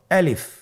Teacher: আলিফ হরফটি মাখরাজ হলো আপনার মুখের শূন্যস্থান থেকে। গলা এবং মুখের শূন্যস্থান হতে আলিফ হরফটি উচ্চারিত হয়। · আলিফে কিন্তু কোন টান নেই আপনারা বুঝতে পারতেছেন আমি যখন আলিফ বলছি এর মধ্যে কোন টান হবে না। আলিফ আবার বলুন আলিফ।